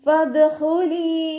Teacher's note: മേലെ മുൻപല്ലിൻ്റെ അറ്റം താഴെ ചുണ്ടിൻ്റെ ഉൾവശത്ത് വെറ്റായ ഭാഗത്ത് കൊണ്ടുവച്ചിട്ട് ഉച്ചരിക്കുക.